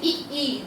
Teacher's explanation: ई का उच्चारण स्थान तालु से होता है। तालु अर्थात जिह्वा से होता है, जैसे ई जिह्वा से होता है।